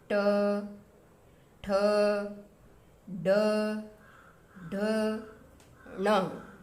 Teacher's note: ट वर्ग का जो उच्चारण स्थान है वो मूर्धा से होता है, यानी कि जीभ के ऊपर का जो हिस्सा होता है उससे होता है।